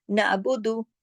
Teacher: आइन को जमाओ के साथ पढ़ना है, नून के हरकत के साथ मिलाकर, क्योंकि आइन जो है उसके पास अपनी हरकत नहीं है।